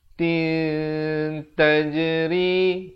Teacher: Ikhfa hakiki disamarkan. Disamarkan kadar dua harakat.